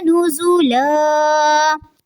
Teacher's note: نزولا زا میں تھوڑی سی شدت رہنی چاہیے اور لام کی ایک زبر کو ادا کریں گے